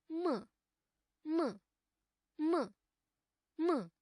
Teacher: अस्यापि उच्चारणस्थानं नासिकया सह ओष्ठौ स्तः। यस्य वर्णस्य उच्चारणं मुखेन सह नासिकया अपि क्रियते तादृशः वर्णः नासिक्यः भवति।